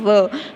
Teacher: तो दांतों से और होठों से केवल व बोला जाता है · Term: दंतोष्ठो